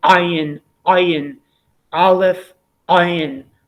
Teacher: There is an ancient tradition which pronounces the ayin in a somewhat different way than the aleph. The ayin would be somewhat deeper in the throat.